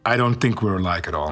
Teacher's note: alike is reduced to awah sound uh like Al likee and the k sound is linked to the following vowel the T from at is turned into a flap team this